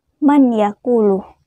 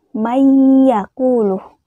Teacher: tersebut dengan berdengung mayakulu tidak dibaca Man yaquulu tetapi mayakulu jadi memasukkan huruf pertama ke dalam huruf kedua dengan berdengung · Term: Idgham Bighunnah, idgham bil gunnah